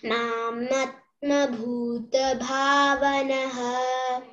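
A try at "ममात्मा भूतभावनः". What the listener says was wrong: See, is it mamatma? Mam, M-A. There is a first M-A. You have the long vowel? No, it is short. Mamatma.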